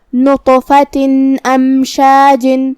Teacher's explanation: کلمت امشاج میں یہاں میم ساکن ہے لہذا ہمیں میم کو ظاہر کرنا ہے. آخر میں حرف الجیم کے نیچے تنوین زیر ہے.